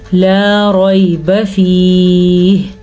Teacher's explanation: اچھا جی، لا لام زبر الف لا، ریب را کو پر پڑھنا ہے کیونکہ را کے پاس زبر ہے، یہ یا لین ہے، یا ساکن سے پہلے زبر ہے تو اس کو ہم لمبا نہیں کریں گے